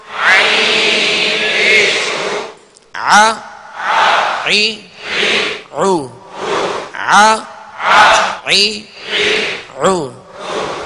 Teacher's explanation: عین زبر ع، عین زیر عی، عین پیش عو، ع عی عو، ع عی عو. یہ وسط حلق سے عین ادا ہوتا ہے آ. اب اس کو وسط حلق سے ادا نہیں کریں گے تو عین حمزہ بن جائے گا، حرف یہ بدل گیا.